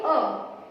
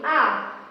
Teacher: जिसके उच्चारण करने में हमें ह्रीश्व स्वर की अपेक्षा थोड़े ज्यादा समय लगते हैं, जिसे हम दीर्घ स्वर कहते हैं।